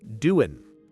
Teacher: notice the G at the end of doing is often dropped in informal speech, so it becomes doin'. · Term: connected speech